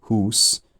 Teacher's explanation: in the north, this high oo vowel, as in hús, it just stayed where it was. It wasn't pressured to diphthongize in the way that it was in the south.